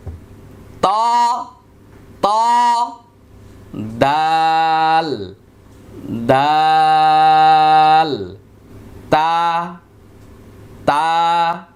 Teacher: উচ্চারিত হবে এটা নুনের চেয়ে একটু ভিন্ন র 11 নম্বর মাখরাজ জিহ্বার আগা সামনের উপরের দুই দাঁতের গোড়ার সঙ্গে লাগিয়ে তিনটি হরফ উচ্চারিত হয়